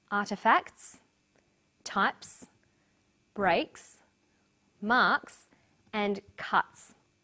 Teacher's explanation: The second way S is pronounced at the end of a word is s. It's pronounced this way after voiceless consonants. P, T, K, F, and Th.